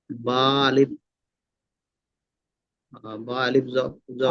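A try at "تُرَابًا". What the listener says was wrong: আলিফটা উচ্চারণ হবে না, আলিফটা উচ্চারণ হবে না, আমরা পড়ে এসেছি আলিফ উচ্চারণ হবে না, বুঝতে পেরেছেন? বা দু জাবার, দেখেন দুটো জাবার রয়েছে, বা দু জাবার বা হয় না, বা দু জাবার বান।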